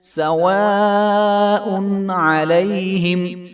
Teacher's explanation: ان الذین کفروا سواء علیہم، تو اس کو سواء علیہم نہیں پڑھیں گے بلکہ لمبا کر کے، حمزہ کے اوپر مد ہے تو اس کو 5 سے 6 الف کے برابر لمبا کریں گے